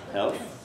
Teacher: If you say health, and say it in the way that English people do, try saying it, health, and you have to stick your tongue between your teeth in order to say that dental fricative, that th sound. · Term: allophonic variation